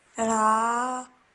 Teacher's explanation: an alif madda. So stretch your sound out for 2 seconds.